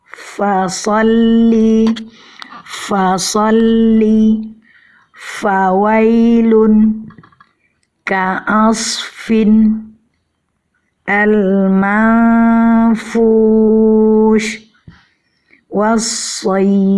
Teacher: Terlihat di sini ujung gigi seri atas bertemu dengan perut bibir bawah. Pada pengucapan huruf fa ini disertai dengan aliran nafas yang keluar ketika kita melafazkannya.